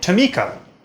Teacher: But maybe if you were listening closely, you heard that puff of air that came with the first sound in Tamika · the first schwa is more nasal than the other one